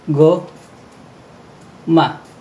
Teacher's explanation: Naging tunog K siya dahil siya ay nasa unahan ng salita. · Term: K sound